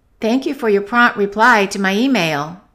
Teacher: we stress the noun, so we're going to stress reply more than prompt